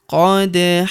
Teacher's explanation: Huruf da berharokat sukun kita pantulkan atau kita qalqalahkan